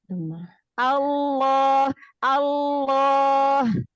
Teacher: ketika kita menebalkan huruf lam nya itu pangkal lidahnya angkat